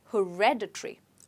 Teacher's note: it's supposed to be stressed on red. So you say it as hereditary